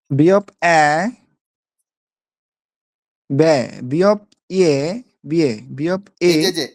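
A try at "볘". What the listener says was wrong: এই যে ইয়ে বললেন, বিয়ে বললেন, বিয়েটা খুব হালকা হয়ে গেল না, একটু বিয়ে চাপ দিতে হবে।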